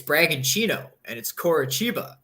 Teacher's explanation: I just found out in the Brazilian league that the TI makes a ch sound. Like it's Bragantino and it's Coritiba.